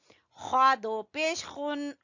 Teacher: ख्वा को गले के सबसे ऊपर वाले हिस्से से